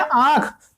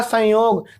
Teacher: तो आंख बोलने के लिए आपकी जो नाक है, नाक पर मित्रों बहुत ज्यादा जोर पड़ता है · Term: अनुनासिक